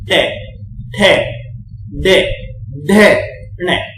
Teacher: ये कहां से आ रहा है पता है, इसको बोल के देखो, टे मतलब ये आपका जो तालू है ना, और दांतों के जस्ट ऊपर जो मसूड़े से होते हैं उनमें टच हो रही है आपकी जीभ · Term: मूर्धा